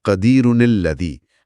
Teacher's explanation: قدیرن کا نون ظاہر ہوگا، اسے زیر ملے گی اور وہ اگلے حرف لام سے جڑ جائے گا. تو یہ بنے گا قدیرن الذی.